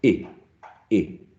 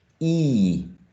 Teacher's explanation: this one is shorter, I, and this one is longer, E, I, E